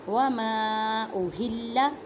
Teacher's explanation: ہاں کو ایک الف کی مقدار میں کھینچ کر پڑھیں کیونکہ ہاں کے نیچے کھڑی حرکت ہے